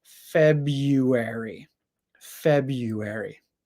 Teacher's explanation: instead of making the first R sound we make a y sound